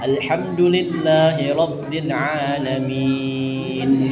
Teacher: jadi dia jelas mendengung dia ada. Jadi N-nya jangan hilang